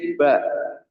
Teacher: Enggak mungkin kita baca ba dari tenggorokan. Enggak mungkin pasti di bibir ba.